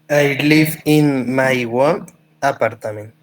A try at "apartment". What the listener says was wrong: In my own apart. Acuérdate que no tiene 3A, sino 2A. Aparta, no, apartment.